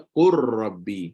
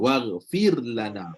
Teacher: kalau kata huruf lam mati jumpa ra, kita akan idgham lam dalam ra